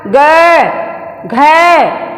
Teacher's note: जैसे ही हम ग कहते हैं पूरा कंठ खुल जाता है और हमारी जो यहाँ स्वर तंत्रियाँ दोनों चिपकी हुई होती हैं वो झंकृत हो जाती हैं, आपस में टकराती हैं। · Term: सघोष